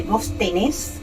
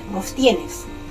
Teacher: porque usaron el vos y la última sílaba acentuada. Por ejemplo, en Argentina y en Uruguay se dice vos tenés, mientras que en otros pueblos dicen vos tienes, manteniendo el verbo en la terminación que usan los españoles.